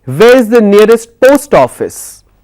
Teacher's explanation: So I'm emphasizing on the word post. So when I'm speaking my rise my tone is rising for the word post. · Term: falling intonation